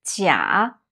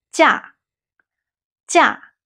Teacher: But when it means holiday or vacation, it's a falling tone, the fourth tone is 假.